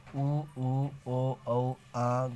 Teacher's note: जिन स्वरों के उच्चारण में होठ की स्थिति कुछ गोलाकार होती है ऐसे उच्चरित स्वरों को गोलीय कहते हैं